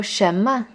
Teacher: 什 is in the second tone. Your voice should go up.